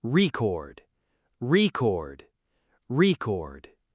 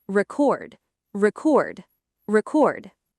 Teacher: Say the noun form first with stress strongly on the first syllable.